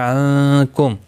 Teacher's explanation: نون ساکن کے بعد حروف اخفا کا کاف اخفا حقیقی ہوگا